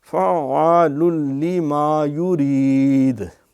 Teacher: یعنی فا عین زبر فا، پھر عین الف زبر عا، فعال، یہاں ادغام ہے لام کا، تنوین کا، لام میں بغیر گننے کے